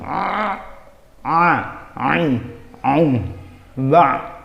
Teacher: Huruf ain ini cara pengucapannya seperti kayak orang ngeden gitu. Ain, aum, ba ada di tengah-tengah tenggorokan.